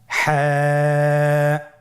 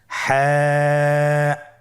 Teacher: হা হরফটি উচ্চারিত হবে কণ্ঠনালীর মধ্যখান হতে। গলা চিপে ধরে আপনি উচ্চারণ করুন।